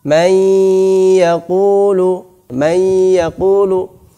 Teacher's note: idgham bi gunnah artinya dimasukkan dan sambil dengung, disertai dengan dengung · sisa-sisa nun itu masih ada yaitu berupa gunnahnya itu. Maka disebut dengan idgham naqis.